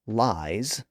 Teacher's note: in a word like lies spelled l i s we actually pronounce that final sound as Z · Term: z sound